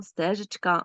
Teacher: у слові Стежечка наголошений лише перший звук